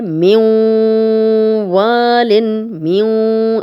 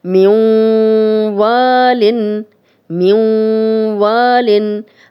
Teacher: اب میم کی آواز واو میں جا رہی ہے، یہ ادغام ہو رہا ہے اور ساتھ ہم غنہ بھی کر رہے ہیں، ناک میں بھی آواز کو لے کے جا رہے ہیں، تو یہ ہے ادغام بالغنہ، یعنی غنہ کے ساتھ ادغام اور ادغام کے ساتھ غنہ۔